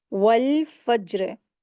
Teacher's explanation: जीम यहाँ पर हुरूफ़े क़लक़ला है, इसको अच्छा से क़लक़ला करेंगे।